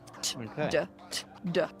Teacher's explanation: Everything about those sounds in terms of where it is placed in your mouth is the same. The only difference is for the duh, your vocal folds vibrating. And for the t, they're not d t d. Only difference. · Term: voiced sound